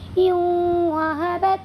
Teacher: نون کی آواز کو واو میں بدل کر تھوڑا غنہ کے ساتھ ناک میں لے جا کر کے پڑھیں گے یوں و بت. ٹھیک ہے. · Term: ادغام ناقص